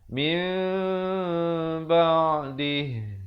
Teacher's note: Di dalam Al-Quran As-Samusmani, nun mati yang diberikan tanda mim kecil yang ekor mimnya ke bawah datang selepasnya huruf ba, itulah hukum iqlab. Iqlab maksudnya menukarkan bunyi nun kepada bunyi mim.